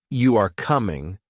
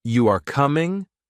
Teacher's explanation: if you say, You are coming, with a flat tone, it is a statement. But if you say, You are coming, with a rising tone, it is a question. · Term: intonation